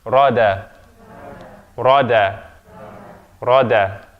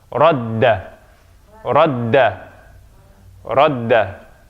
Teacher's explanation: If there's no shaddah there, it's rada. Rada. If there's shaddah, then it's double. We have the consonant gets doubled. So radda, radda.